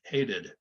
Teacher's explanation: You won't hear it. So we have to add that id, the extra, the sort of the schwa, and then the D